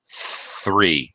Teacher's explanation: You're just pushing air out. You're not using your vocal cords to make a sound, as you are with the voice sound. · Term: voiceless TH